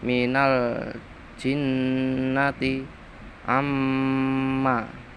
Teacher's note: bacaan ghunah mendengung sebab nun lan mim ditasdidi